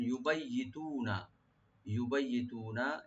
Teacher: ইয়াটাকে double করে ইউবাইয়ি বলবেন, তু একালে টানবেন